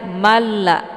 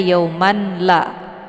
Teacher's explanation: Karena hukum bacaan idgham bila ghunah ini dia tidak berdengung. Jadi cukup baca saja malla seperti bacaan yang bertasydid.